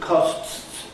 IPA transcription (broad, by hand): kɒsts